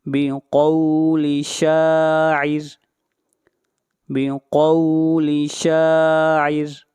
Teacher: یہاں پر را کو باریک پڑھا جائے گا اس لیے کہ را سے پہلے زیر ہے